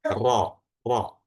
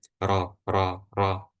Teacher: Lidah bagian belakang itu menebal. Sehingga apa? Rongga mulut itu menyempit. Maka menghasilkan suara ro, ro. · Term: tebal